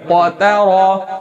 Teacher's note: قاف بھی موٹا را بھی موٹا، تا درمیان میں باریک ہے